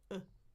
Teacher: Tongue in the middle, jaw partly open, lips relaxed. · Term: schwah